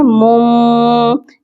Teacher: جب بھی دو زبر دو زیر دو پیش کے بعد حروف با آتا ہے تو ہم تنوین کا جو ساؤنڈ ہوتا ہے اس کو میم میں ایکسچینج کر دیتے ہیں، میمز کے ساتھ اس کو چینج کرتے ہیں۔